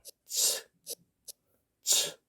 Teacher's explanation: 전문용어로 말하면은 이 소리는 무성, 치음, 파찰음이라고 합니다. 이 경우에는 소리를 내실 때 윗니하고 아랫니를 살짝 닿을 정도로 이렇게 만드신 상태에서 혀를 거의 붙이셔야 되겠죠.